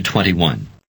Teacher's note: note that the D is pronounced like a t because it is at the end of the word